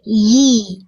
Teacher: Yi, rasakan tengah lidahnya naik ke atas.